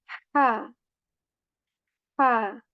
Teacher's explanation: a letter of throat from the middle portion of our throat, and which has a lot more airy sound